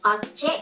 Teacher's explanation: Khi object là động từ chúng ta nhấn vào âm tiết thứ hai